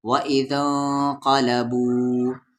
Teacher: مد کے سمبل کے بعد یہاں پر حمزہ ہے تو اس مد کو 3 سے 4 الف کے برابر کھینچیں گے